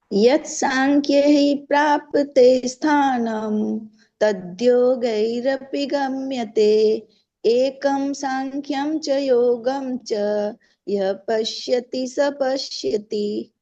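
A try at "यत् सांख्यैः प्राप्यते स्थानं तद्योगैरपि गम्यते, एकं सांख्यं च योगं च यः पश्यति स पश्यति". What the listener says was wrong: ठीक है, अच्छा है।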